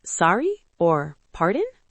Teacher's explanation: If you didn't hear or understand something, you can say sorry with a rising intonation.